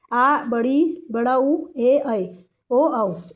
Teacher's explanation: इसमें दो मात्रा का समय लगता है और इनकी संख्या सात है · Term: दीर्घ स्वर